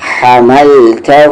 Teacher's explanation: ہا middle throat سے، حملتہ علی الذین، دھیان سے عین مڈل تھروٹ سے